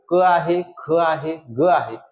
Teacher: कंठवर्ण म्हणजे कंठातून निघणारे वर्ण कंठातून निघणारे क आहे ख आहे ग आहे मात्र च हा